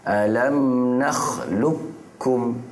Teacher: Qaf ni dengan kaf, masukkan terus qaf ni pada kaf. Jadinya lukum. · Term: idgham mutaqaribain